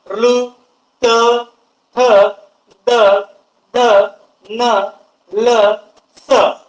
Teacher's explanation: तुमची जीभ जी आहे ही दाताच्या मागच्या बाजूला स्पर्श करते त्यामुळं त्याला दंत वर्ण असं म्हटलेलं आहे